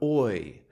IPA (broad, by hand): ɔɪ